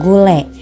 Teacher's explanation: vokal E, tengah atas depan tak bundar pada kata gule